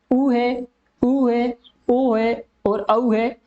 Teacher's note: जिन स्वरों के उच्चारण में होठों का आकार वृत्त के समान गोल होता है उसे अपन वर्ताकार स्वर कहेंगे, जिसमें ऊ है, ऊ है, ओ है और औ है।